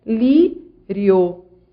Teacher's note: Você vai da semivogal para a vogal. Você cresce. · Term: ditongo crescente